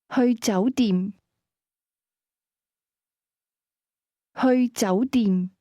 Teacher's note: Hotel is pronounced with a combination of mid- rising and midlevel tones.